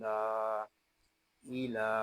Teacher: یہاں لام کو ایک الف تک کھینچ کر پڑھیں گے کیونکہ یہاں کھڑا زبر ہے